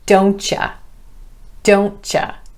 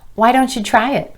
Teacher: you'll hear this Y sound changing to the CH when the word you is coming after a word that's contracted with not